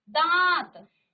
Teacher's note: जब आप दांत कहते हैं, आपका मुख भी खुल रहा है। साथ में आपके नाक से भी वायु बाहर आ रही है। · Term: अनुनासिक